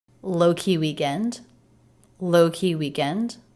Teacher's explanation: Low and weak are the two stressed syllables within these two-syllable words.